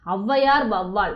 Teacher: முதல்ல வரும்பொழுது தனக்குரிய 2 மாத்திரை அளவிலிருந்து 1.5 மாத்திரை அளவில் ஒலிக்கும். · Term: ஔகார குறுக்கம்